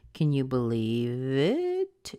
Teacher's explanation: you would have heard me have a rise at the end of the sentence can you believe it it goes up that's because it's a · You'll notice that this is a yes/no question, so if you paid attention, you would have heard me have a rise at the end of the sentence